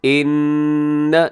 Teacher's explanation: یہاں نون مشدد ہے، یہاں غنہ کیجیے گا